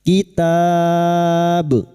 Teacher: huruf ba yang dibaca wakaf ketika wakaf di sini maka huruf ba kita pantulkan qalqalah kubro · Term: qalqalah kubra